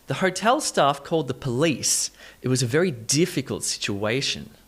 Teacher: this stress moves from, say, the second syllable in police to the first syllable in difficult to the third syllable in situation.